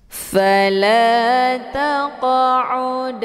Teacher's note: dipantulkan dengan pantulan ringan bunyi Q Sekedar Saja